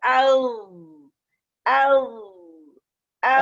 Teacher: ہوا نہیں آنی چاہیے, اس میں ہمس نہیں ہے, اچھا اس میں صرف از آواز آئے گی اور نرمی سے, ایسے نہیں کہیں گے او, جلدی میں نہیں, نرمی سے آئے گی او.